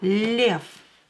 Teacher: Voiced consonant become unvoiced at the end of the word. So V will become F.